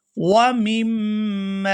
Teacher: یہاں میم مشدد پر غنہ ہوگا اور پھر میم کو الف کی وجہ سے کھینچ کر ادا کریں گے